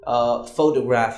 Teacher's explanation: When you say photograph, you stress on pho and not the other syllables like toe and graph. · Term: Syllable stress